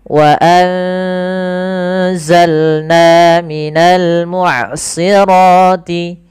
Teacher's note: Na mad thabi'i panjang dua harakat. Fathah ketemu alif. · Suara nunnya disamarkan ke zai. Wa anza sambil ditahan bacaan eng-nya atau bacaan gunnah ikhfa ya, dengungannya.